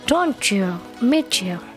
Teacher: ketika ada bunyi t plus y itu cara membacanya CH